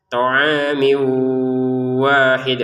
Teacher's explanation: Mimnya harokatnya kasrotain kita masukin ke wawu